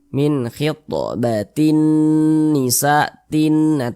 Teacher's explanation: jadi suaranya itu kita tahan kita panjangkan sejenak Min khitbatin Nisa Tin tinnya tu kita tahan kita panjangkan sejenak · Cara membacanya tuh digunnahkan. Nah, digunnahkan tuh ya didengungkan. Jadi suaranya itu kita tahan, kita panjangkan sejenak. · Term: ghunah musyaddadah, gunnah musyaddadah